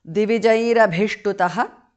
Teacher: Visarga changes to repha